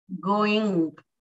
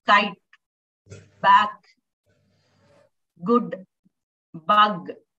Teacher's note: The velar consonant sounds are made. You raise the back of your tongue to the velum to block or restrict airflow.